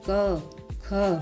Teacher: का वर्ग के वर्णों को बोलते समय जीभ कंठ को छूती है